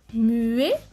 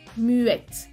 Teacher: No suena la T, masculino, suena la T, femenino.